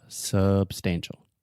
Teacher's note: the first sound is the schwa sound